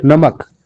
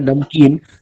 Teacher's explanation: लेकिन नमकीन जब बोलते हैं, नमकीन, तो म आधा हो जाता है